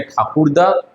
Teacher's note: ঠাকুর দাদাতে দাদা বলতেছি কিন্তু এখানে আমরা একটা দায়ের উচ্চারণ করতেছি আর একটাকে বাদ দিচ্ছি, এই হচ্ছে আমাদের সমাক্ষর লোপ।